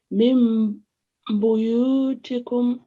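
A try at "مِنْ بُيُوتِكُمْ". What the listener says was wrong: Min buyutikum. Excellent, mashallah. You have to maintain that 2 seconds on the meme sound.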